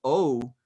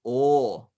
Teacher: o without gliding into oo as it's usually done in english